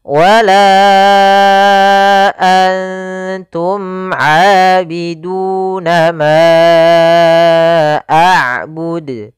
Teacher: Maka kita panjangkan untuk huruf la sepanjang 4 harokat dan kita namakan di sini hukum tajwid mad jaiz munfasil 4 harokat.